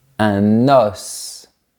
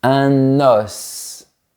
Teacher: Un os. On fait bien la liaison, on ouvre bien la bouche et on prononce la lettre S.